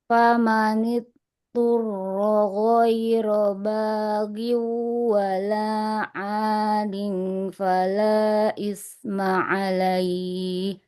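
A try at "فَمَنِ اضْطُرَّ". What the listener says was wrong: Famanid, huruf dotnya. Rakhwah harus mengalir suaranya. Tapi lidah menempel ke gigi geraham atas untuk makhrajnya. Famanid turro ghairu baghi wala adin fala isma alaih.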